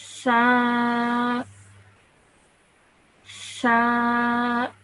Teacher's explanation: Now this letter, you might have noticed that I pronounced it a bit differently, and that is that when I pronounce this letter, what I have to do is you take the tip of your tongue and you place it between your two sets of teeth. So your top teeth and your bottom teeth, you place the tip of your tongue between them, and then you pronounce this letter.